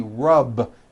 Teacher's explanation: the word rub ends with a voiced B.